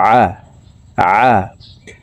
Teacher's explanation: আইন হরফকে হলকের মধ্যখান থেকে উচ্চারণ করব, কারণ আইনের মাখরাজ হলকের মধ্যখান থেকে হবে